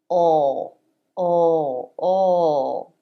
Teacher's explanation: L is made with the back part part of the tongue front of the tongue stays down back of the tongue presses down and pulls back a little bit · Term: dark L